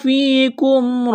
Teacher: ایک الف کے برابر کھینچنا ہے، یہاں یہ یا مدہ ہے، یا سے پہلے زیر ہے، اس کو ایک الف کے برابر کھینچنا ہے